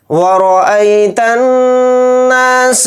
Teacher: را کے اوپر زبر ہے اور یہاں پر حمزہ یا زبر ای اس میں حروف لین یعنی کہ یا لین ہے تو اس کو جلدی پڑھیں گے ای اس طرح سے جلدی پڑھیں گے. تا کو نون میں ملائیں گے اور نون کے اوپر تشدید ہے تو نون میں غنہ کریں گے. نون الف زبر نا یعنی الف مدہ اس کے ساتھ ہے تو نون الف زبر نا کو ایک الف کی مقدار تھوڑا کھینچیں گے.